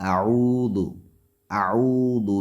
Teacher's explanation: دال باریک حروف میں سے ہے، حروف استفعال میں سے، لہٰذا دال کو باریک پڑھیں گے، پیش کی وجہ سے اس کو کھینچیں گے نہیں۔ اعوذ، عین کو کھینچیں گے لیکن دال کو نہیں